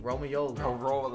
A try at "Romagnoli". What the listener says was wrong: There's a G. Do you see the G in the end?